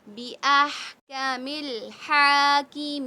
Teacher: ہا کی آواز حلق کے درمیانی حصے سے بالکل کلیئر